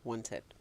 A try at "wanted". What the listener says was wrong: Okay, so this is how you pronounce it. Wanted. Tid, not ted. Whenever you add ED to what we term in English an alveolar plosive, that's in D or T sounds, it becomes id and not ed.